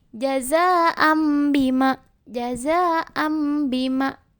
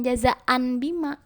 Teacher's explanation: mengubah atau mengganti huruf nun sukun atau tanwin menjadi bunyi huruf mim dengan mendengung dan dipanjangkan 2 ketukan atau 1 alif. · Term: Bacaan iqlab